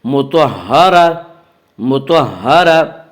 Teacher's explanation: آگے آیت ہے وقف کریں گے، گول تا وقف کی صورت میں ہائے ساکنہ بن جاتی ہے